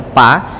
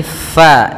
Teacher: hati-hati dalam lafal fa, jangan dibaca pa tapi fa, alirkan nafas kita